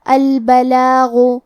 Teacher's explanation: کلمت البلاغ کے آخری میں غین ہے، غین کی ادائیگی حلق کے اوپر والے حصے سے ہے، غین حروف التفخیم میں سے ہے تو ہم یہ حرف کو موٹی آواز میں پڑھیں گے